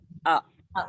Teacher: देखिए सुनिए, new student ध्यान दें कि अलिफ का कोई मखरज नहीं होता और अलिफ मुंह के खाली हिस्से से अदा होता है